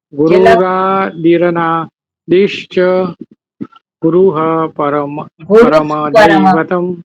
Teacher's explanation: વિસર્ગ પછી પકાર છે એટલે વિસર્ગનો અડધો ફકાર થાય